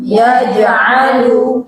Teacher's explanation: Nah, itu tertahan suaranya, cuma kalau jim ditambah sifat qalqalah ya, jadi jangan yaj aja, yaj enggak, tambah qalqalah yaj, qalqalah itu mantul